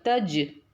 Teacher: இந்த ஜீம் வந்து கல்கலாவுடைய எழுத்துங்கிறதுனால இதை நம்ம அசைச்சு ஓதுறோம்